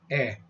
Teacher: it's not a as in day it's not real long it's short eh